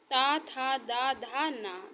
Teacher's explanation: दंत ता था दा धा ना, दांतों से बोले जाते हैं